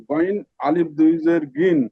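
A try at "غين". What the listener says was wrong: না, আলিফ নাই, এখানে তো আলিফ নাই।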